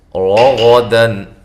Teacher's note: را اور غین کو موٹا، لمبا نہیں کرنا. دن نون تنوین کا اظہار ہے.